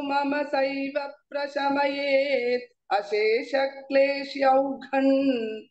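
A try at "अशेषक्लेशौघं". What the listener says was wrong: What I'm saying, kleshyau is not there, kleshau, au ki matra is there, you are saying kleshyau, ya is not there, my dear, kleshau. Why kleshyau? There is no kle. Ha, gha mahaprana, let it come now. Here you have not chanted, so that is okay. Gha mahaprana.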